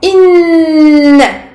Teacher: une durée très longue qui est la durée de al-ghunna akmal ma takoun